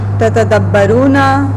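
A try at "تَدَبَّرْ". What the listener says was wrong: single ता आएगी तदब्बर अमर में सिंगल ता आएगी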